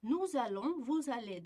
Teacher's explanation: fe'l bizda a unlisi bilan boshlanganligi uchun mana shu yerda biz s ni z deb o'qiymiz